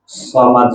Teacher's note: صاد میں سیٹی ہوتی ہے اور اس کو موٹا پڑھا جاتا ہے. صاد میں 2 صفتیں ہوتی ہیں، سیٹی اور موٹا.